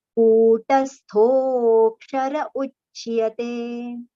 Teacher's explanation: Uchyate. Okay, so cha and ya should be heard as a combined letter, one sound.